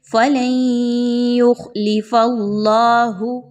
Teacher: نون ساکن کے بعد یا آ گئی ہے تو یہاں پر ادغام مع الغنہ کیجئے ، کیسے؟ لام کو یا کے ساتھ ملائیے غنہ کرتے ہوئے،